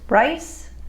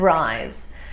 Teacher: the S sound in rice has no vocalization. The Z sound in rise does.